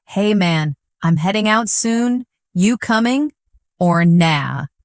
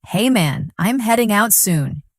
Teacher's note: Notice the dropped G in heading and coming and the use of casual phrases.